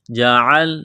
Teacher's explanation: گلے کے درمیان سے زور لگا کر عین کو نکالیں گے